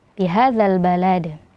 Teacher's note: ada dal kasroh yang kemudian disukunkan karena waqaf dan hukumnya menjadi qalqalah kubra